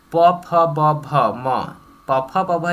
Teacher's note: प फ ब जो है हमारा ओष्ठ से होता है। याद रखिए पूरा प फ ब जो है हमारा ओष्ठ से ही होता है।